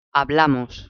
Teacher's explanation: So we know that it goes on the second last vowel, which is hablamos. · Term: nose rule